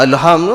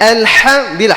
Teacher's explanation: hak yang duduk di tengah-tengah halkum, hak dan ain duduk di tengah